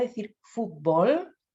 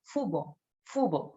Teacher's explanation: No dice las letras finales, ni la T ni la L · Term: omisión de fonema